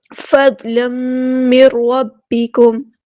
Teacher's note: نون ساکن کے بعد را ہے، ادغام بلا غنہ ہو رہا ہے، ادغام کامل.